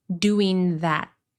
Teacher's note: doing that So, the tongue is in the location to pronounce a regular T sound, but with a stopped T, you do not push any air. You hold it there. This happens when T is at the end of a sentence or before another word with a consonant sound.